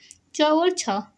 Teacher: स्वर तंत्रियों में क्या होता है? कंपन नहीं होता है। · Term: अघोष